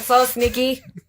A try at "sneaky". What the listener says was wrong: No, I think you said stinky right there.